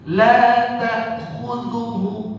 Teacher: Ingat, ta'khudhuhu di sini hamzah, bukan ain. Jangan nanti bacanya la ta'khudhuhu.